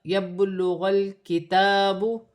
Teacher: با ساکن ہے اور حروف قلقلہ میں سے ہے، قلقلہ کے ساتھ ادا کیا جائے گا